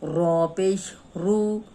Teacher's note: اب رو پہ پیش ہے تو رو موٹی پڑھی جائے گی